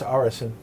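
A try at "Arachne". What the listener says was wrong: No, there's no I.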